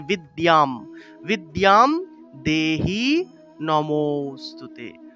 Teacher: সংস্কৃত ভাষায় অনুস্বারের উচ্চারণ হলো ম